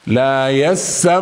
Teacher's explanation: لا يسمعون هذه الغنه بمقدار حركتين